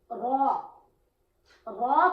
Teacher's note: را کا مخرج نوکے زبان، مائل بپشت اور مقابل کا تعلق